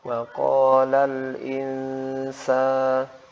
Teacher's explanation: nun sakinah dibaca dengan ikhfa ya, ketika bertemu huruf sin yang berharokat fathah dengan gunnah 2 harokat